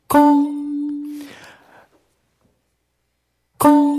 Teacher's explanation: The important thing here is that this sound has the right shape. It begins with the k sound, which is a transient with lots of information in it. And as you stretch that, it becomes the attack of the bell.